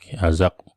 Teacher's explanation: huruf qalqalah berbaris mati berada di pertengahan. Jadi qalqalah sughra. Bunyi lantunan yang rendah.